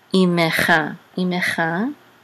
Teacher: And so this is a mercha, it says mercha, so this is koret, and this is an ayin of the chirik, and a mem, and we're gonna sound the shiva because there's a degesh in the mem. If you remember that rule, if there's a degesh in the word, we're gonna sound in the letter, we're gonna sound the shiva, even if it's in the middle of the word.